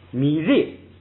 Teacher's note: 升降调到后边呢是不许升，光许降，所以就干脆变成四声